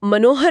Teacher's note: मनः प्लस हर में ह के प्रभाव से विसर्ग ओ की ध्वनि में बदल जाता है। जिससे शब्द मनोहर बनता है। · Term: विसर्ग संधि